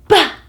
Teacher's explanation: that's a plosive sound. It's an explosive burst of air.